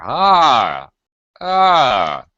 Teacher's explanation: a little high and then a quick hook low